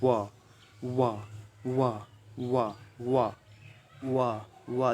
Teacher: दंत ओष्ठ व्यंजन, जो दांत और ओष्ठ दोनों से बोला जाता है